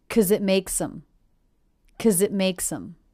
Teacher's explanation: I reduced the word because to simply 'cause. The K, schwa, Z sound.